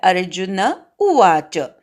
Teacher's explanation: फक्त इथे दक्षता अशी घ्यायची की उ दीर्घ पण होता उपयोगी नाही, ऱ्हस्व उ आहे तिथे.